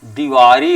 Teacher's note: दीपावली में दा में दीर्घ ई लगा हुआ है और यह ह्रस्वीकरण होकर के दीवारी हो जा रहा है, ह्रस्व ई लग जा रहा है